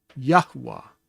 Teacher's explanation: if you say it fully, you're going to hear what seems to be a third syllable, but it's just a matter of the way of saying his name.